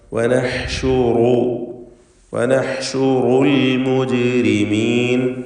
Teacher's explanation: ജീബിൻ്റെ സുക്കൂൻ ഖൽഖല സുഗ്റ നൽകി ഹറക്കത്ത് പോലെ ശബ്ദം ചലിപ്പിച്ച് വ്യക്തമാക്കണം